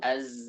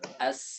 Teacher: Yang bedakannya adalah zai, sifatnya adalah al-jahr. Jahr itu tekanannya kuat. Sedangkan sin sifatnya hams. Hams itu lemah. Tidak ada tekanan sama sekali.